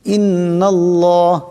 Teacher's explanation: এক আলিফ পরিমাণ গুন্না করিয়া পড়তে হবে ইন্নাল্লাহ এখানে আল্লাহর লাম আল্লাহর লামের ডানে জবর আছে আল্লাহর লামকে মোটা করিয়া পড়তে হবে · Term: মোটা আওয়াজে